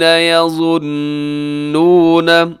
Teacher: وجنودی آگے قال الذین یظنون، یہاں نون مشدد پہ غنہ کیجیے گا